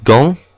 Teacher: AN makes an ON sound like in gant, again very nasal.